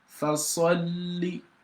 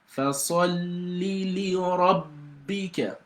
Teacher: So it has a lam with a sukun that you're going to pronounce, and also another lam with a kasra. So for you to pronounce the lam on fasalli, you've got to pronounce the silent lam inwardly and pronounce the one with vowel sound outwardly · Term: doubling rule